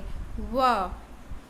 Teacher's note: दंतोष्ठ मतलब दांत और होठ मिला के, व, इसको कहते हैं दंतोष्ठ्य।